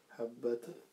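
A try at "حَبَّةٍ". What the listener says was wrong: Parce que là, c'est la voyelle i. Donc c'est le tanwin, double kasra, double voyelle. Habbatin.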